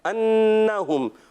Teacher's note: ادغام شفوی۔ ادغام شفوی میں بھی ایک الف کا غنہ ہوگا